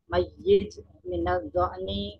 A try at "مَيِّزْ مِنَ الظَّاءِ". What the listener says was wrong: Diulangi za bukan ja ya, bukan mayij, mayiz pakai za.